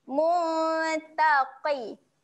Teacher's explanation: Huruf qaf huruf tebal. Okay, walaupun dia berbaris bawah, kita kena juga baca dengan tebal. Muncungkan sedikit mulut.